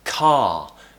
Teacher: a word like car we don't pronounce the R at the end